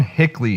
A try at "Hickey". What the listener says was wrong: Ryan Hickey. I think it's Hickey. There's no L. It's not Hickley. Hickey. There's no L. Hickey.